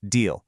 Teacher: Your lips stay completely relaxed, almost stretching into a smile